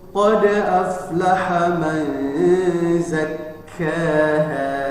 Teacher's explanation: Kemudian zakkaha itu ada syiddah. Jadi kaf huruf syiddah ditasdid, maka dia lebih kuat lagi untuk menekannya.